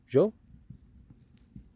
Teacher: it's not quite like a j it's kind of like a a really airy j like a shh mixed in with the ja